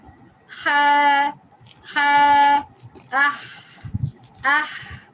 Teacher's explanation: Again, move the back of the tongue towards the throat wall to constrict the windpipe. Ha sound, windpipe partially closed in order to let the air rush through it.